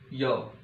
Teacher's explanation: ये जो यह, इसका उच्चारण स्थान है तालु, य, तालु उच्चारण स्थान है, तो इसे तालव्य व्यंजन बोलेंगे